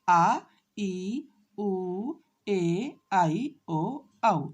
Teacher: जिन स्वरों के उच्चारण में ह्रस्व से दुगना समय लगता है उन्हें हम दीर्घ स्वर कहते हैं